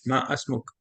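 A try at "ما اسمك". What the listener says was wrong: मसमुक, ये ना मीम जो है ना इसको डायरेक्ट मिलाएंगे हम सीन से, मसमुक।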